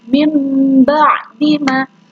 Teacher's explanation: harus membalik atau mengganti suara nun sukun menjadi mim.